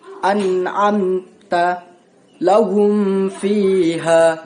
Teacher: Jadi cara membacanya yang terang di bibir dengan mulut tutup dan harus lebih jelas diizharkan. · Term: izhar syafawi